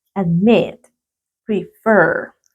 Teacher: Y la mayor fuerza de voz está en la última sílaba.